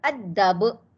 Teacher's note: Hujung itu qalqalah kubra sebab dia berbaris.